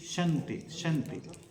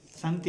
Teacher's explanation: శంతి సంతి కాదు అక్కడ, శంతి తాళవ్య షకారం